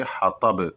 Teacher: اور ہا کو حلق سے ادا کیا جائے گا، یہ بڑا ہا ہے ، اور یہاں پر بھی رکیں گے تو قلقلہ کے ساتھ